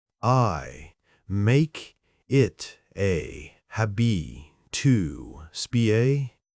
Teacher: I want to hear the T in habit. I want to hear the K in speak.